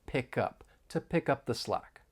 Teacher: up the slack when pronouncing this idiom more linking may occur we can link the final consonant sound in pick with the beginning vowel sound in up